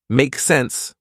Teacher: you can simply shorten that and say make sense with a rising intonation